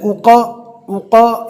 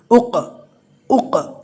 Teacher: قلقلہ کرتے ہوئے قوف کے اوپر زبر نہیں پڑھ لینا ہے